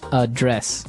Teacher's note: So the verb address has the stress on the second syllable.